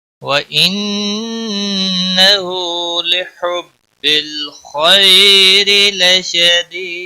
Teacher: لحب ہا کا خاص خیال رکھنا ہے، وسط حلق والا ہے · ساتھ کھینچ کر پڑھیں گے، خا کو موٹا بھی پڑھیں گے، را کے نیچے زیر ہے اس لیے باریک پڑھیں گے · دید دال وقف کی صورت میں ساکن ہوگا، اس پر قلقلہ بھی ہوگا ، 3 سے 5 سیکنڈ وقف کی صورت میں اس کو